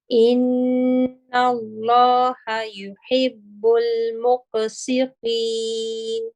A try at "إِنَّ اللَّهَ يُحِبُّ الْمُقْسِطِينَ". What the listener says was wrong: Again with the qaf, you can have you can be heavier with your the qalqala here. إن الله يحب المقسطين. Yes, with the yeah, I didn't hear the noon at the end.